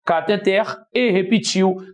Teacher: tem um caso de palavra oxítona, a sílaba mais forte é a última